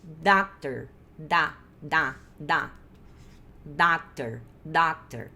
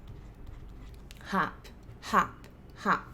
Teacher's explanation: Eu tô fazendo com a minha garganta o som de A, só que aí a minha boca fica de O.